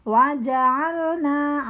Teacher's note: huruf ja itu huruf qalqalah, jadi memantul, harus ada pantulan dari hurufnya ja. Waja'alna, ain keluar dari tenggorokan bagian belakang.